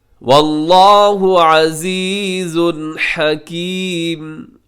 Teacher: واللہ لفظ اللہ موٹا ہے، عزیز حکیم میں تنوین کے بعد ہا آ گیا ہے.